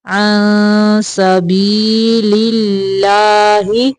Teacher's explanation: یہاں پہ اللہ کلام باریک پڑھیں گے